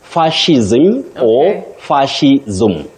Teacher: you don't say s you say sh